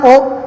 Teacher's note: तो इसलिए ओ और औ इन दोनों वर्णों के उच्चारण स्थान क्या होता है? कंठोष्ठ अर्थात कंठ व ओष्ठ इन दोनों स्थानों से इसको बोला जाता है।